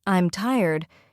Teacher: for a statement like, I'm tired, your voice falls. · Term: intonation